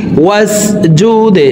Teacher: দাল কলকলার হারফ নিচের দিকে ধাবিত করে ধাক্কা দিয়ে উচ্চারণ করব